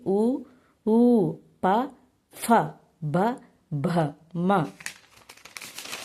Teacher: పెదవుల నుండి పుట్టే అక్షరాలనే ఓష్టములు అంటారు